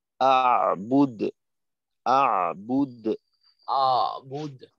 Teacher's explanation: জজমের উচ্চারণে আইনকে আরেকটু মাখরাজের চাপ দেওয়ার চেষ্টা করতে হবে যাতে আইনটা আরেকটু স্পষ্ট হয়